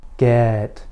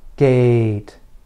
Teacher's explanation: Your lips should be slightly farther apart for the E sound, and your tongue should be slightly higher for the A sound. You can think of E as a relaxed vowel and A as a little more tense. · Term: front vowels